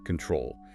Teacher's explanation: We stress the back, control.